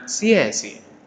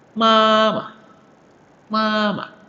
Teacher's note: Nah, ini yang di belakang ini adalah huruf tulisan huruf netral. Nada netral, jadi tidak ada penekanan